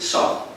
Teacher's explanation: phonemic value of alveolar unvoiced fricative. Alveolar unvoiced fricative, that is saw.